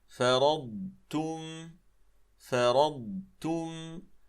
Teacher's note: ذات الأمر أيضا وردت عندنا في هذه الصفحة هذه الكلمة وفيها الضاد ساكنة، فأيضا نعطي الضاد حقها من الزمن ومن الاستطالة، ثم ننتقل بعدها إلى التاء ولا ندغمهما